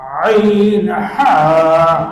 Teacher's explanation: দুই নম্বর মাখরাজ হলকের মধ্যখান হইতে